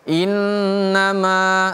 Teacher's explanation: Innama. Ma-nya panjang, 2 harokat.